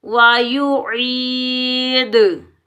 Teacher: या मद्दा को एक अलिफ की मिकदार में खींच कर अदा करेंगे